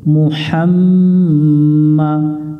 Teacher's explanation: মু হা মিলবে মিমের সাথে হাম মা, এটা ওয়াজিব গুন্না, মিমের উপরে তাসদিদ আছে, এটা গুন্না করা ওয়াজিব, বাতি চিহ্ন দেখে গুন্না করে নিব।